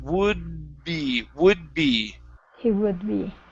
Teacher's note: we're going to use that d sound we don't want to finish it